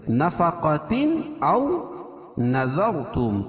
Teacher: ذال کو باریک اور را کو پر پڑھیں گے، کیوں؟ رائے ساکنہ سے پہلے ذال کے اوپر زبر ہے تو را پر پڑھی جائے گی۔ · تنوین کے بعد حروف حلقی کے 6 حرفوں میں سے حمزہ ہے، تو یہاں اظہار ہوگا، یعنی اس کو ظاہر کر کے پڑھیں گے